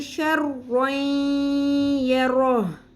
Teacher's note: شین زبر را شر، را دو زبر، آگے یا آ گیا حروف یرملون میں سے، تو یہاں پر ہم ادغام مع الغنہ کریں گے، ملا دیں گے اور غنہ بھی کریں گے